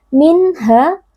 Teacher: bunyi nun sukun dibaca dengan jelas tanpa dengung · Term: izhar halqi